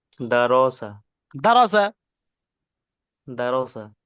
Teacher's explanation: আর রয়ের উপরে আহ জাবার আছে, তাই রকে পুর করে পড়তে হবে